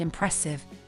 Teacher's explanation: the root of impressive is press which has the primary stress